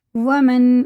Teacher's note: یہ نون ساکن کے بعد عین آ رہا ہے تو حرف حلقی میں سے ہے تو جیسا لکھا ویسے ہی پڑھیں گے، غنہ اخفا کچھ نہیں کریں گے